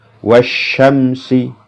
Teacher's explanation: Alif lamnya tidak dibaca dianggap tidak ada langsung masuk pada huruf yang berharakat tasdid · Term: asyamsiyah, Asy-Syamsiyah